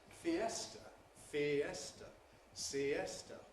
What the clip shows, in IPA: fiˈestə